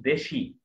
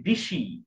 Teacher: যেমন মনে করেন আমি একটা শব্দ বললাম দেশি, দেশি একটা শব্দ, এখানে দুইটা স্বরধ্বনি আছে, একটা হচ্ছে এ, একটা হচ্ছে ই।